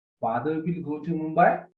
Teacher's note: it looks a statement structurally but when we pronounce it in the rising intonation a statement becomes a question